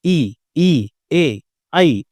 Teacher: देखिए, सबसे पहले मैंने आपको बताया था अग्र, ठीक है? अब जब आपको ई बोलना हो, ऐ बोलना हो, तो आपकी जीवा का जो अग्रभाग है वो ऊपर की ओर जाएगा।